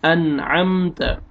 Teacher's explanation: نون ساکن کے بعد عین آ رہا ہے حروف حلقی میں سے، تو یہاں پہ آپ نے اظہار کرنا ہے